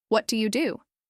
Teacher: That last word, do should go down in pitch.